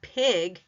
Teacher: the lips are spread out and they're not rounded